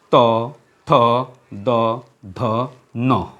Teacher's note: এরপর রয়েছে দন্তজাত ধ্বনি। যে সকল ধ্বনি উচ্চারণের সময় জিহ্বার ডগা বা আগা ওপর পাটি দাঁতের পিছনের দিকে আঘাত করে, উচ্চারিত হয়, সেগুলোকে দন্তজাত ধ্বনি বলা হয়